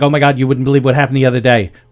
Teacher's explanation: our accent drops a lot of the hard consonants at the end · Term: new york